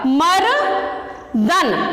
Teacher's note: जब हम मर्दन शब्द का उच्चारण कर रहे हैं तो रा की ध्वनि मां के साथ निकल रही है, इसलिए मां गुरु हो जाएगा।